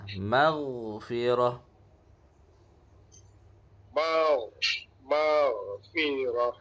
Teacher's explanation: Huruf ghain juga termasuk huruf isti'la. Ya, tebal, mengalir